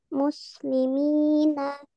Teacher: ada ya sukun yang sebelumnya ada harokat kasrah. Nah, jadi juga dibaca panjang dua harokat. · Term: mat tabi'i